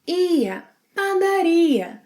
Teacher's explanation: Place the stress on ia.